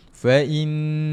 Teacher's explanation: Maka dia kena baca dengan wajibul ghunnah. Dengungkan dua harakat.